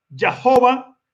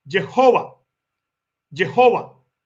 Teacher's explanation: en el hebreo que habla de la mutación de la jot cuando la a corta está detrás de una jot se cierra y suena como una e